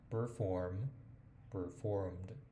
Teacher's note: mi pronunciación es un poquito más británica, entonces a veces omito la R